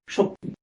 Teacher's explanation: ই ধ্বনি আসার কারণে এখানে সটির এখানে যে স এর সাথে অধ্বনি আছে, সেই অধ্বনিটি সংবৃত হয়ে গিয়েছে